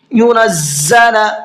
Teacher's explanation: زا کے پروناؤنسیشن میں سیٹی ہوتی ہے ذال کے مقابلے میں · یا ادغام کے حرفوں میں سے ہے، اگر نون ساکن کے بعد میں آتا ہے تو وہاں پر تھوڑا سا یا کو نون کی آواز کو ناک میں چھپا کر کے پڑھتے ہیں، غنہ کر کے پڑھتے ہیں۔